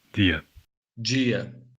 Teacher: In Portugal, it's pronounced D, or the, usually when between vowels. In Brazilian Portuguese, it's G.